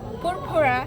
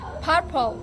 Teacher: purpura changed to purple because one R become L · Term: dissimilation